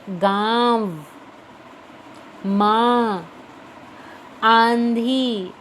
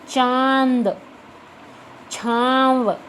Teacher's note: गले से तो आवाज निकले हैं लेकिन नाक से भी निकलेगी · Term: अनुनासिक